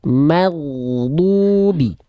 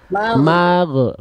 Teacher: Huruf ghoin kan dilafalkan dari tenggorokan paling atas atau ujung tenggorokan, dialirkan suaranya